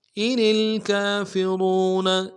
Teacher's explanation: را کو موٹا ادا کریں گے، نون کو نرم سے ادا کریں گے